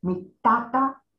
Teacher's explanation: To denote my father, my mother, General Papiamentu uses mi tata, so with the T of Theodore, mi tata y mi mama. Mi tata, high, low. Mi mama, high, low.